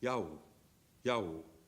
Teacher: into Yahoo because we like vowels very much we like vowels Yahoo is a y and a w each followed by aspirates little puff of air